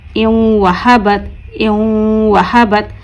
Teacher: ایک الف کے برابر، یعنی ایک الف کے پڑھنے میں جتنی دیر ہوتی ہے اتنا ہمیں کھینچنا ہے غنّے کو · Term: غنہ